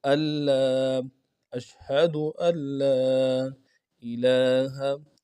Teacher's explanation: نون نہیں پڑھا جائے گا، نون کے بجائے آگے لام سے ملا کے پڑھیں گے